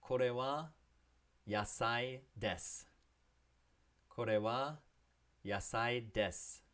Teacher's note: I know it looks like it ends in desu, but you don't have to say the su. If it ends in des, just cut it off at the s sound.